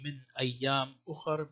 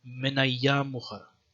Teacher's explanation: it seems like there was no hamza, so you wouldn't say min ayyam ukhar, but more like connected. Pronounce it more flowingly, min ayyam ukhar.